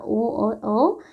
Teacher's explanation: जो ओ और औ है इनका उच्चारण और स्थान ओष्ठ प्लस कंठ दोनों ही माना जाएगा। क्यों? क्योंकि अ और इ से मिलकर यह बना है।